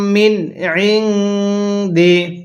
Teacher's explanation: প্রথম নুনটা স্পষ্ট করে পড়তে হবে, কারণ প্রথম নুনের পরের হরফটি হলো আইন। নুনটা আমরা স্পষ্ট করে পড়ব, দ্বিতীয় নুনটা আমরা গুনাহ করে পড়ব, কারণ প্রথম নুনের পরে আইনটি হলো ইজহারে হরফ, আর নুন সাকিনের পরে ইজহারে হরফ থাকলে নুন সাকিনটা স্পষ্ট করে পড়তে হয়।